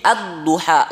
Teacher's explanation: Untuk gampangnya ini misalkan ad-duha, ya, surat ad-duha itu tadinya al, kemudian tambahin duha, ketika disambung jadi ad-duha, lamnya hilang, sudah diidghamkan ke bod, itu namanya idgham mutaqaribain, idgham mutaqaribain, ya.